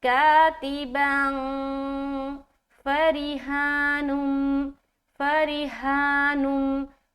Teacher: تو یہاں پر ہم پڑھ رہے کاتباً فریحانم، فریحانم، فا زبر فا، را زیر ری، را کو باریک رکھ رہے کیونکہ زیر ہے۔ را کے بارے میں یہ خیال رکھے کہ را کے اوپر کبھی بھی زبر یا پیش آتا ہے تو را کو موٹا پڑھنا ہے، ہیوی بنائیں گے، اور را کے نیچے اگر زیر آتا ہے تو اس کو باریک پڑھیں گے، یعنی کہ لائٹ پڑھیں گے۔